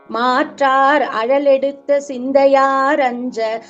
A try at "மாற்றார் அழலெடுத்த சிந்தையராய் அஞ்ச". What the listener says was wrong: சிந்தையார் இல்லம்மா சிந்தையராய்